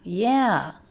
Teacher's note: Up, down, shape of a stressed syllable, casual way to show agreement.